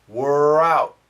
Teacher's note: So when you make the R sound, the tongue doesn't touch anywhere. We're out. When you make the T sound, the tongue is touching, but not the R.